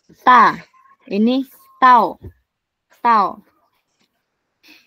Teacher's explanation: ujung lidah tuh kayak di gusi gigi atas gitu